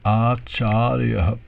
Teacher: So long A in the beginning, long A in the middle, and a short A in the end there.